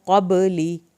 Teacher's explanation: बा को हिलाना है, कलकला होगा